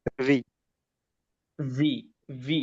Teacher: ওটা হলো ওই যে ফা এর মত উপরের দাঁত নিচের ঠোঁটের মাঝে একটু লাগবে ভি ভি ভি শক্ত করে ফা এর মত না ফা হলে